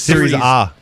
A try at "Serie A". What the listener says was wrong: Serie A. They don't pronounce it A in Italy.